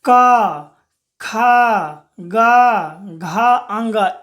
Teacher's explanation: जब आप क बोलिएगा ना तो इसका उच्चारण कंठ से होता है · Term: कंठय वर्ण